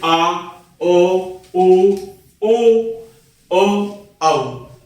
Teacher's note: जिन स्वरों के बोलने में जीभ का पिछला भाग सहायक होता है वे पश्च स्वर कहे जाते हैं।